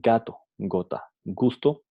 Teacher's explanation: el aire se ve obstruido completamente antes de salir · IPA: /g/